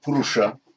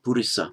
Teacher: in Pali, as usual, the sh becomes a s, but the u also changes, the second u changes to an i. So Sanskrit purusha, Pali purisa.